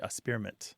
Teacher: So some people kind of skip the K sound. They say experiment, which is kind of more of a childish pronunciation.